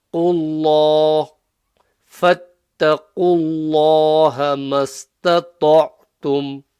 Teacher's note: That's quite clear. Oh yeah, the lam in Allah's name, because there's a dhamma before Allah's name. Allah, Allah's name becomes full mouth, the lam.